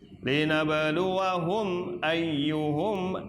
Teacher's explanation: mim sukun ketemu hamzah dibaca jelas